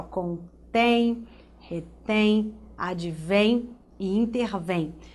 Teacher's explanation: todas essas palavras aqui têm em comum que o fato de a sílaba mais forte está posicionada na última posição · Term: oxítonas